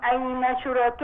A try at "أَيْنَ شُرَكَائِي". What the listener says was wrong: لا، هي الهمزه مكسوره. اين شركائي؟ الهمزه مكسوره وبعديها ياء.